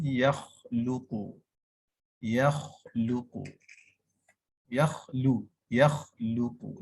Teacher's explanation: huruf kha ni perbezaannya pada sebutan kha adalah pada hamas. Tanpanya sebutan bertukar kepada huruf ghin